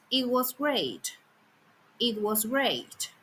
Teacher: Even though the sentence has three words, the main fall happens only on the last one because that's the nuclear syllable. So remember even if there are small small sorry ups and downs before the real tone is on the final important word those earlier movements are called prenicular prenicular pattern sorry and they do not decide the tone.